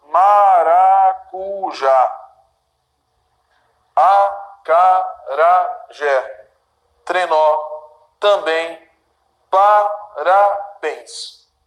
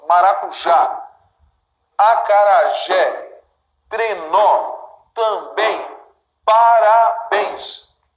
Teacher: Sílaba tônica dessas palavras que eu acabei de dividir, né, é sempre a última. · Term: oxítonas